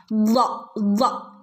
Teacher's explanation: സ്വാദ് okay next സ്വാദ് സ്വാദ് സ്വാദ് എന്ന് പറയുമ്പോൾ നാവിൻറെ അരിക് വശം നാവിൻറെ അരികുവശം അരികുവശവും അണപ്പല്ലുകളും അണപ്പല്ലുകളോട് ചേർന്നിട്ടാണ് ളാദ് വരുന്നത്